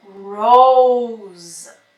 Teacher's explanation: So this is a singular word here, but the letter S is pronounced as Z.